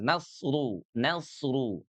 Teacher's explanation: huruf 'ra' tebal karena memiliki dammah. · Ru-nya nih ada domahnya. Oke. Maka berarti dia dibacanya tebal.